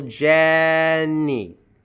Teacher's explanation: And then Jenny, stress on the first syllable.